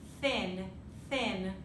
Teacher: So we have the unvoiced version, which is, you may not even hear it much from where I am, right? It's sound coming between the teeth and the tip of the tongue